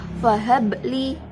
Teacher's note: bacaan qalqalah sugro sebab ba mati asli